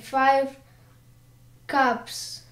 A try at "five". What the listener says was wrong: Five which нужно было позвонче. Five. Ну ты передержал, переартикулировал, но ничего страшного. В нормальном общении такого все равно происходить не будет. А здесь в упражнениях это необходимо.